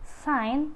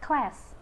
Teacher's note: voiceless alveolar fricative for the initial position is sign